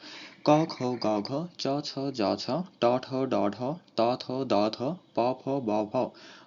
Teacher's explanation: অর্থাৎ প্রতি বর্গের প্রথম চারটি ধ্বনি হচ্ছে স্পর্শ বা স্পৃষ্ট ধ্বনি। কারণ এসব ধ্বনি উচ্চারণের সময় দুটি বাগ প্রত্যঙ্গ পরস্পরের সংস্পর্শে এসে বায়ুপথে বাধা তৈরি করে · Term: স্পৃষ্ট বা স্পর্শ